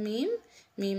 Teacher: शफा न में से है शफन होठों को कहते हैं और बंद होठों के खुश्क हिस्से से आपका मीम अदा होगा